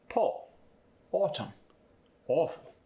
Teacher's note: For the aw sound, the lips are going to move forward again, they're rounded, and the mouth is just barely open.